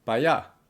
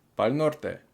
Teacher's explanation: instead of para, it becomes pa. So they say pa allá, over there, or pa'l norte.